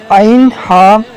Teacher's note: عین ہا حلق کے درمیان والے حصے سے ادا ہوتے ہیں